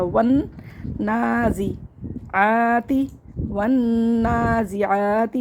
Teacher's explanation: واو کو نون سے ملایا، کھڑے زبر کو ہم نے کھینچ لیا، زا کو جلدی پڑھا، عین کو ہم نے ایک الف برابر کھینچ کے پڑھا، تا کو جلدی پڑھا، اور واو کو بھی ہم نے جلدی پڑھا.